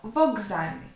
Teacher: пригадуємо одзвінчення глухих з є дзвінким тому глухий перед ним одзвінчиться відповідник до глухого звука к дзвінкий звук Ґ тому у вимові ми скажемо Вокзальний